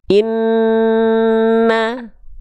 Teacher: Dengungnya ini maksudnya dua tuh apa? Tahan dua harokat. Baru masuk ke vokal A-nya. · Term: gunnah